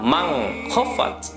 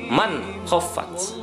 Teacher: Nun mati bertemu dengan kho. N-nya pun jelas. Man khaffat, bukan mang khaffat, tetapi man khaffat. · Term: izhar kholki